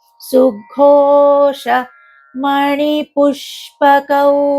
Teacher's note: సుఘోష, ఘో అనేది మహాప్రాణం